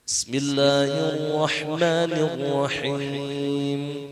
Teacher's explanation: Ketika Ar-Rahman lebih monyong sedikit karena dibaca tafkhim, tebal.